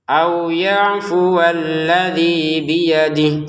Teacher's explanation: Untuk alladzi baru dua harakat. Biyadih kita baca tidak panjang walaupun ada ya kecil karena tidak gabung sama berikutnya.